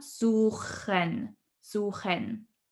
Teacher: Here with suchen, the CH sound is usually a bit difficult. So we pronounce it here in the back of our throat.